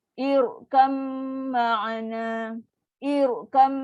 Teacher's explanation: Kita punya lidah tu melengkung. Nak naikkan bunyi ra tebal ni.